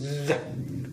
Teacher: It's happening a blockage of our airstream here, so it's interdental. Okay, the passive articulator is the teeth sets, and the active articulator is the tip of our tongue or on the blade of our tongue. Okay, the manner here, it is there is a friction, so it is fricative. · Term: interdental fricative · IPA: /ð/